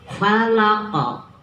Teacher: qolqolah kubro karena di ujung di akhir kalimat diwakafkan